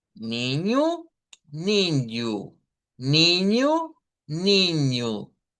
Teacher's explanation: estaría el sonido de esa i, como que fuera una j, pero es una i, pero nasalizado